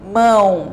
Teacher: Vocês vão perceber que sai tanto pela boca quanto pelo nariz. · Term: som nasalizado